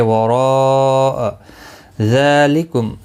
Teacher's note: ذال کے اوپر کھڑی زبر ہے، ایک الف کی مقدار کے برابر کھینچ کر پڑھیں گے۔